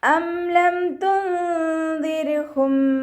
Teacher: നൂൻ സാക്കിനയെ മറച്ചു വെച്ച് മണിച്ചോതി കൊടുക്കുക കേട്ടോ. അം ലം തുൻദിർഹും ഇവിടെയും നൂൻ സാക്കിനയ്ക്ക് ശേഷം ഇഖ്ഫാഇൻ്റെ അക്ഷരമായിട്ടുള്ള ദാല് വന്നു.